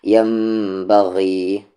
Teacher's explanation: غین پڑھیں اسے، گا ساؤنڈ نہیں آنا چاہیے ، ینبغی نہیں، ینبغی، اپر تھروٹ جہاں سے خا کی آواز